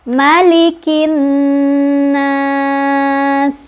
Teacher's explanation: cara bacanya adalah kita panjangkan sebanyak boleh 2, boleh 4, boleh 6 harokat ya. Sekali lagi kita baca Malikin nas ya, konsisten nahan gunnahnya ya. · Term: mad arid li sukun